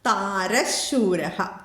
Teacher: ഷ മാത്രം ഇവിടെ വിസർഗ്ഗ സ്ഥാനത്ത് ഉച്ചരിക്കാം